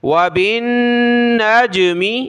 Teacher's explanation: وعلامات وبالنجم، واو زبر و، با کو نون کے ساتھ ملائیں گے، غنہ کریں گے نون پر، اور نون کو جیم کے ساتھ ملائیں گے، جیم پر ہم نے قلقلہ کرنا ہے